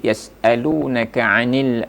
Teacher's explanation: itu hanya sekedar menyamarkan bunyi nun sukun atau tanwinnya